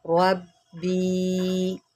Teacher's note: रा को मोटा करें, बा के ऊपर जमाव करें